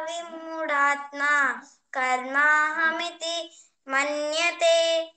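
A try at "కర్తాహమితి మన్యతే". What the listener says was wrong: కర్తాహం ఇది మన్యతే. కర్మ కాదు, కర్తాహం ఇది మన్యతే.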